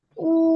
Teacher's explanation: واو جس پر جزم ہو اور اس سے پہلے پیش ہو تھوڑا کھینچے اور معروف پڑھیں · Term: واو مدہ